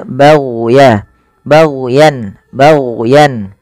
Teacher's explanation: hati-hati jangan sampai memantulkan huruf gain karena huruf Gin bukan huruf mantul